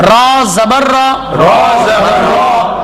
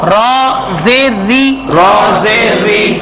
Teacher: را کے اوپر زبر آئے تو را کو موٹا پڑھیں گے